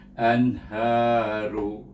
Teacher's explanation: nun sukun bertemu dengan huruf halqam dibaca dengan izhar halqi. Jangan dengung, jangan panjang. Terus izhar saja.